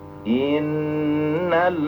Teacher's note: Nun bertasdid sama mim bertasdid dengung.